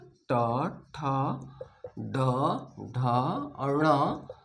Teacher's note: ट का उच्चारण करते समय जीभ कहाँ स्पर्श कर रहा है? मूर्धा को स्पर्श कर रहा है, इसलिए इसका उच्चारण स्थान मूर्धा हुआ।